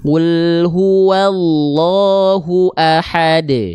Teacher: karena berhenti pada huruf Qalqalah qalqalahnya lebih kuat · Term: Qalqalah Kubro